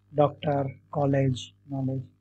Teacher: आ और ओ के मध्य की जो ध्वनि है